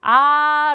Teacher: 아아 라고 발음을 할 때는 입이 크게 벌어지면서 혀가 밑으로 내려가요